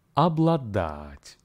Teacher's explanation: Be advised that the first syllable ob in a spoken Russian is actually pronounced as ab. The stress here falls on the last syllable, dat.